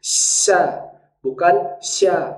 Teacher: bunyi Tengah lidah yang naik ke langit-langit